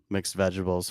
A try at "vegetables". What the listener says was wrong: Vegetables. Vegetables. It's got a D in it now.